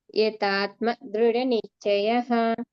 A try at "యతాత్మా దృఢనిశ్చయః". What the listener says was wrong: రెండో తా కి దీర్ఘం పెట్టట్లేదండి రెండో త కి కూడా దీర్ఘం పెట్టాలి